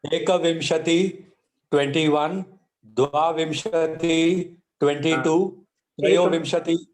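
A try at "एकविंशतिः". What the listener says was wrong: Sorry to interrupt you, Mahodaya. There is a visarga at the end.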